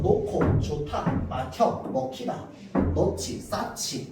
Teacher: 히읗이 있고요. 거기에 그드, 브, 즈를 만나면 얘네들이 발음이 어떻게 변한다고? 크, 트, 프, 츠라고 하는 거센 소리로 바뀌게 됩니다. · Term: 거센 소리 되기